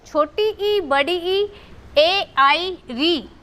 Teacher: ये अग्र स्वर हैं जो जीभ के अगले हिस्से से बोले जाते हैं।